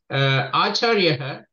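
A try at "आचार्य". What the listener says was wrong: உத்தாய எழுந்து கொண்டு ஆச்சாரியா தான் இருக்கணும், விசர்க்கம் கிடையாது.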